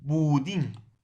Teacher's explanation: la bu va a ser una sílaba átona